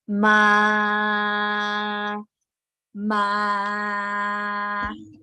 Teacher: the first tone is flat tone flat tone go like this straight